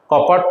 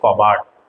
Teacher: একটা অঘোষ ধ্বনি ঘোষ ধ্বনিতে পরিণত হয়েছে